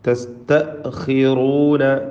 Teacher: ഖാഇന് കസ്റാണ്, റാഇന് അതുകൊണ്ട് ഖാഇന് കുറഞ്ഞ തഫ്ഖീം, റാഇന് പൂർണ്ണമായ നിസ്ബിയായ തഫ്ഖീം കൊടുത്ത് റാഇനെയും ഉച്ചരിക്കുക.